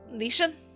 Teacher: Shen is of the first tone, high and steady.